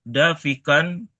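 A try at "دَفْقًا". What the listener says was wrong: Daf, konfanya sukun, bisukunil fa.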